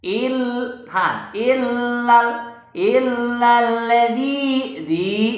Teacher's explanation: ini mad tabi'i, panjangnya 2 harkat atau 2 ketukan atau 1 alif